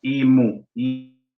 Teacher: La N se transforma en M, pero no pierde su lugar. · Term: asimilación de puntos de articulación